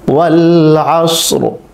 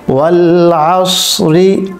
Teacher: তাহলে এই সূরাটি আমরা কিভাবে তাজদিদ সহকারে আদায় করতে পারি আমরা একবার পড়ি, ওয়াল আসরি মিলিয়ে পড়লে ওয়াল আসরি, আর যদি আমরা এখানে ওয়াকফ করি ওয়াল আসর, রটাকে পোর করতে হবে, মিলিয়ে পড়লে রটা বারিক হবে